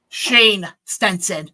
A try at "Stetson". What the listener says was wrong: Not Sten, it's Stetson. Yeah, but you're saying Sten like, Stem, but it's Stet.